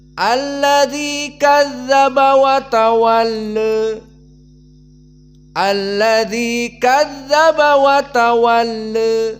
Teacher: madhab yang pertama dibaca dengan taklil pada alif layyinah, dan madhab yang kedua dibaca dengan al-imalah al-kubra pada tawalla.